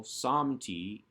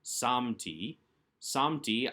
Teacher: again with the A-class vowel, samti, and the accent on the first syllable, because it's really the second to last syllable.